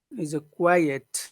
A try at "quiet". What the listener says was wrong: Quiet. You have to put that E. If you don't put that E, I will hear very. I think you're saying very.